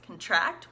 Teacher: contract which is the verb contract with the accent on tract